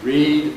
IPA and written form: riːd (read)